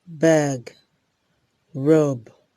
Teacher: B is a voiced bilabial plosive.